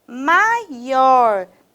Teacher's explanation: nós temos o ó terminado em R com uma tonicidade mais forte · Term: sílaba tônica